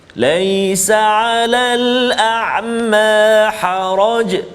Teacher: Yang pertama tafkhim, yakni huruf ra yang berbaris di atas kena baca tebal. Bahagian pertama huruf ra yang perlu kita baca tebal, iaitulah huruf ra yang berbaris fathah ataupun baris atas.